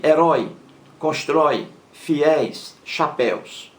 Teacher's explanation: são palavras oxítonas a sílaba mais forte é a última